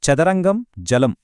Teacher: రెండవది తాలవ్యాలు ఇక్కడ నాలుక మన అంగిలిని అంటే ప్యాలెట్ ని తాకుతుంది.